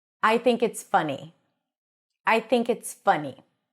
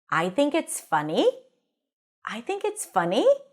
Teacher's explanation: the fact that I lifted the pitch at the end indicates that I'm actually asking a question